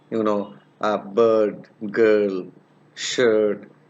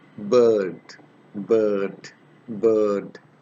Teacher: This is a long vowel which is produced in the central part of the vocal tract. This vowel is pronounced with the lips in half closed and unrounded position.